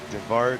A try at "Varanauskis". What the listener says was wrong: Nope. Varanauskis. No D. There's no D. You got to ignore the D.